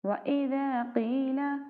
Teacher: قاف حروف مستعلیہ میں سے ہے تو اس لیے ہم قاف کو موٹا کریں گے